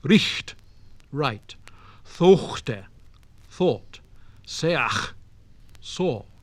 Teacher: The letter H in some positions represented a strong sound like that of CH in modern German.